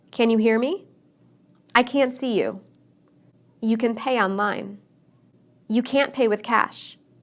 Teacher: I didn't use the T sound in any of those sentences, and many people don't.